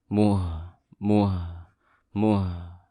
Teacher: ada ha sukun, ditahan suaranya